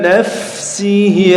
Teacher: Huruf fa itu ada hemesnya, jadi ada hembusan nafas yang mengalir ketika diucapkan.